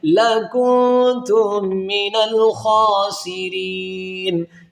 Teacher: میم ساکن کے بعد میم ہے، تو یہ میم ساکن کے قیدوں میں یہاں پر ادغام کیا جائے گا